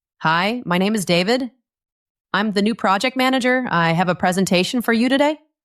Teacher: This is called uptalk. It's like you are putting a little question mark at the end of every sentence. · His voice went up at the end of each statement.